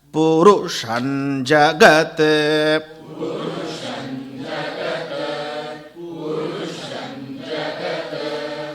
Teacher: Ru upper swara, give it a whiplash.